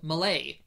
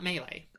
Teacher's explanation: the language is called Ma-LAY, not MAY-lay